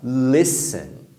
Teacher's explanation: Tem duas sílabas e a primeira é mais forte.